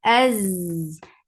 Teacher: give rakhawa and safir on za